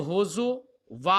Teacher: زا کے ضمہ اور واو کے ساتھ، یعنی حمزہ کو واو سے بدل کر